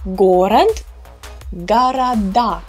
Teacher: pay attention how the unstressed o shifts with the emphasis shift